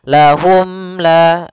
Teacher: Maka untuk panjang izhar untuk cara membacanya, yaitu suara mimnya tidak boleh ditahan, tidak boleh lahum la, tapi akan tetapi dia harus jelas dan langsung saja. Lahum la sambil menyempurnakan daripada huruf mimnya. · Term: izhar syafawi